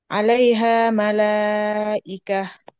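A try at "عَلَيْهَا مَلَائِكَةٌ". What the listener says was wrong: Malaikatun tanwin.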